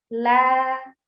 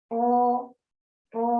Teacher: Ya kita bisa lihat di gambarnya sudah sangat jelas. Suara yang harusnya itu keluar lurus, nah tapi itu terhalang oleh lidah yang menempel. Nah jadi la suaranya muncul di pinggir. Kalau tadi ro itu jadi di tengah, ro, ro.